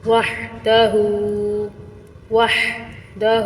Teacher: ہا کو ضرور حلق کے درمیانی حصے سے نکالیے، اس کو ہا ہی پڑھنا ہے، آپ نے ہاں نہیں پڑھنا، ترجمہ بدلے گا، معنی بدلے گا، اور بعض دفعہ معنی بہت غلط ہونے کی وجہ سے گناہ گار بھی انسان ہو سکتا ہے۔